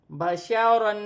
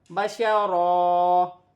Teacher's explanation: با زبر با، شین زبر شا، بشا، را دو زبر رن بشارن وقفاً بشارا. وقف کی صورت میں ایک زبر گر جائے گی اور ایک زبر ایک الف مدہ میں بدل جائے گی اور را موٹی پڑی جائے گی